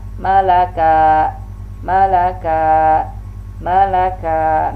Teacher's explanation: Nah kalau kaf sifatnya adalah dia syiddah, tertahan.